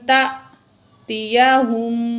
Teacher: تا یہاں جو ہے حمزہ ساکن ہے، جھٹکا دیں گے